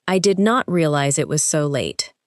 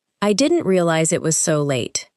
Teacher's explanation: Notice how did not contracts and how the unstressed words become lighter.